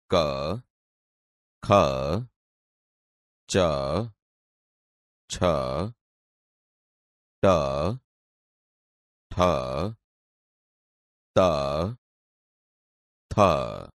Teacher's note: અઘોષ ધ્વનિ નાદતંત્રી મહદ અંશે અલ્પ માત્રામાં એટલે કે અકંપ અવસ્થામાં કંપે ને જે ધ્વનિ ઉત્પન્ન થાય તે અઘોષ ધ્વનિ તરીકે ઓળખાય છે.